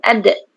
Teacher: Dal itu ujung lidah berada di belakang gigi kacip, belakang atas dekat gusi. Bukan dekat langit-langit.